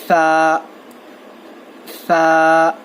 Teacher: سا کا مخرج ہے زبان کی نوک کو سامنے کے 2 دانتوں کے کناروں کو لگانے سے ادا ہوتا ہے. سا جب آپ پڑھیں گے, جب آپ کی زبان جو ہے دونوں دانتوں کے کناروں کو لگنا چاہیے, تھوڑی سی زبان باہر آنا چاہیے, زیادہ نہیں, صرف تھوڑی.